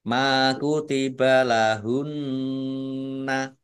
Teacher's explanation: Ma kutiba lahunna mim fathah Alif Mad Thobi'i panjang dua harakat Nun tasdid bacaan gunah atau mendengung ditahan dua harakat biar tampak dengungannya